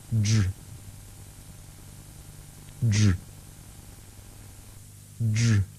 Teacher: the tongue moves slowly up and back in the mouth, away from the teeth ridge. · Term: voiced dr